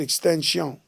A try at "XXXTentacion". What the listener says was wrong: It's funny because Boosie called him Extension also in our interview, but it's actually pronounced XXX Tentacion.